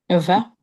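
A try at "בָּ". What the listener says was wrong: Non, il y a le point cette fois-ci.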